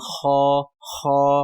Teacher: خا زبان کے پچھلے حصے سے جب حلق شروع ہوتا ہے وہاں سے یعنی ادنی الحلق سے یہ ادا ہوتا ہے